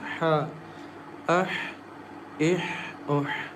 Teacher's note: Ha comes from the middle of the throat